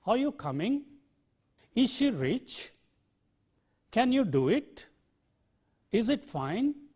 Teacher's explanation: yes no questions are generally said with the rising tone